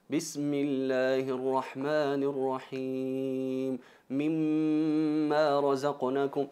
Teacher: se pronuncia pegando los labios, acompañada de la gunna, la nasalización